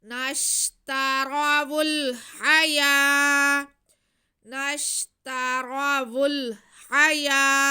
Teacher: आगे हा पे खड़ा ज़बर, हा पे ज़बर और या पे खड़ा ज़बर। हा को नहीं खींचना, या को हमने एक अलिफ के बराबर खींच लेना है